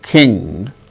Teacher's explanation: the air comes out through nostrils instead of mouth